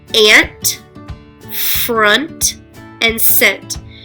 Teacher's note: each word ends with an n and a t and they're put together but they make two sounds